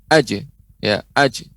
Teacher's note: untuk penggunaan jim tidak sampai terdengar ada hamzahnya. Aj, tidak.